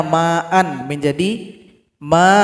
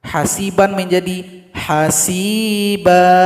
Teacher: Jadi an menjadi a, dipanjangkan 2 ketukan.